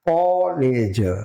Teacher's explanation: તો કો એ વિવૃત્ત બોલાય